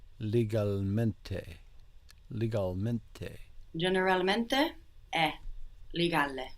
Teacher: we're still carrying over quite a strong e sound from English legal